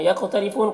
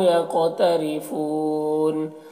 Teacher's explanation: بیما میں الف مدہ ہے، کاف میں الف مدہ ہے، نون میں واو مدہ ہے، یہ سب کو الف کے برابر کھینچیں گے۔ یقترفون، قاف کو پر پڑھیں گے اور قاف میں قلقلہ کریں گے، را کو باریک پڑھیں گے، فون میں وقف کی صورت میں مد عارض وقفی ہوگا، تو اس طرح سے پڑھیں گے۔